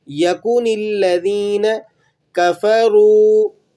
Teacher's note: سب سے پہلا حرف دیکھیے گا، لم یکن الذین، یہاں پر یکن الذین کاف پر جو پیش ہے آپ نے اس کو لمبا نہیں کرنا، اور اسی طرح مجہول نہیں پڑھنا، یکو ایسے نہیں پڑھیں گے، یکن الذین کفروا، ٹھیک ہے۔